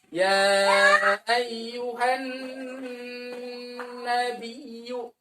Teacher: Nun bertasdid. Ditekan, ditahan lama ya, melibatkan rongga hidung.